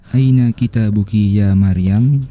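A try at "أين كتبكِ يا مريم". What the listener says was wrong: Kita buki, kalau itu berarti taknya panjang ya. Aina kita buki. Ini kan taknya pendek ya. Berarti bentuk jamak dari kitabun itu apa ya? Kutubun.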